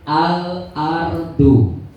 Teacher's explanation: Ketika ada al ketemu huruf kok bunyi L-nya tidak hilang berarti alqomarih